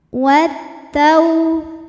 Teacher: Kemudian ada hukum alif lam syamsiyah, sebab alif lam menghadapi huruf syamsiyah yaitu ta. Cara bacanya, alif lam tidak dibaca atau disebut dengan idgham syamsi. Wat tau.